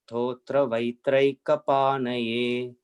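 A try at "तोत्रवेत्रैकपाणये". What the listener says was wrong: See, Totra Ve Traika Panaye. Okay, not Totra Vai. Totra Ve Traika Panaye. Totra Ve Traika Panaye.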